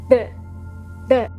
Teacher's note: Pas un R avec le fond de la gorge, mais un R avec le bout de la langue.